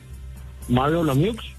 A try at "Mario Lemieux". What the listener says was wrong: I like how he pronounces the X at the end. All right, Mario Lemieux.